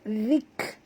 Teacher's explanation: huruf zal sentilkan lidah, lembut, dia tak tebal, zik, dan bunyikan hamas pada huruf kaf, zik rabbihi.